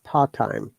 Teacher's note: So in part there is T, and in time there is T. So if you bring together, it should be simply part-time. You don't need to pronounce two of them together. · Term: double consonant rules